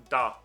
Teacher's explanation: if it has dokuten on it you pronounce it da so all you do is change from voiceless to a voiced consonant